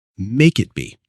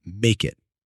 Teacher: The consonant K links right into the vowel I.